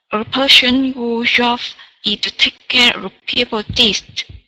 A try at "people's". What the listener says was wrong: Yeah, so just pronouncing that S there. So people's. People's.